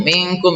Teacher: ini nun mati bertemu dengan kaf, ini juga ifa hakiki, ini nun matinya disamarkan dan berdengung